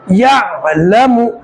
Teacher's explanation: یعلم، یہاں پر عین نکالیں گے، عین کو بھی گلے کے بیچ میں سے جان لگا کے نکالنا ہے. یا عین زبر یا، لام زبر لا، یعلا.